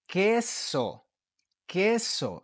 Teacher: But so when you're pronouncing the Q, you don't say quo. You do not pronounce the U. You ignore the U and you pronounce the vowel that follows it.